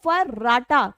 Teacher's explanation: र को हम प्रकंपित या लुंठित कहते हैं। र को प्रकंपित क्योंकि र बोलने में कंपन जैसा महसूस होता है।